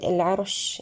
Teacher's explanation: العرش أيضا الراء هنا نأتي لها بالبينية وهي مفخمة. عندما نقف على كلمة العرش نأتي برخاوة الشين أن أصبحت ساكنة، أما في حالة الوصف فهي متحركة بالكسر.